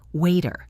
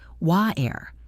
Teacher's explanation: In British English, they often say water with a glottal stop, where the T is barely pronounced